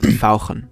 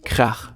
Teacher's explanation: German has the special ach sound, which sounds very throaty. It can be heard in the German words fauchen, which means to hiss, or krach, which means noise.